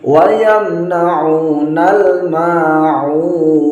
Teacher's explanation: Ain dia harus ain ditekan penekanannya, bacanya ditekan, tidak boleh diganti hamzah. Wa yamna'unal ma'un, bukan wa yamna'unal, tidak boleh tawallud, tapi wa yamna'unal ma'un.